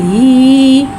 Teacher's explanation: इधर हा को भारी अदा करके पढ़ेंगे। हा के नीचे खड़ी ज़ेर है, खड़ी ज़ेर को नीचे गिराते हुए अदा करके पढ़ेंगे और खड़ी ज़ेर को एक अलिफ यानी 2 हरकत के बराबर खींच के पढ़ेंगे। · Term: भारी वाला हा